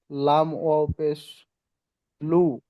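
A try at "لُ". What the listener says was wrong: লাম ও পে লু, টান দিয়ে বলেন।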